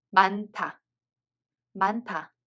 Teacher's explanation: Hieut is followed by [ㄷ] so [ㄷ] becomes [ㅌ]